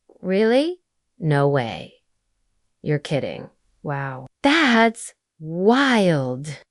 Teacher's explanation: When you say no way, let your tone rise like surprise, lifting your voice. That's how native speakers show genuine interests.